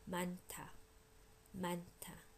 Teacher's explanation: N goes with the first syllable. H goes with the second syllable, making the second syllable aspirated.